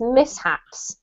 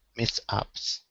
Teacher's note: There's no sh sound in this word.